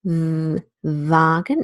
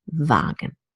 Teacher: the German word vlog and Vagan has a voiced sound Vulcan it's a voiced labiodental fricative